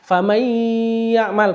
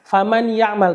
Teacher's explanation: Jadi dimasukkan dengan dengung, ya, diidghamkan. Famay ya'mal, bukan faman ya'mal tapi famay ya'mal. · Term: idgham bi gunnah